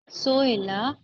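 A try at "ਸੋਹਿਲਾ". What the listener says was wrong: एनु सो कह के तुसी लमकाउणा नहीं है रुकनी वाला सोहेला नहीं सोहेला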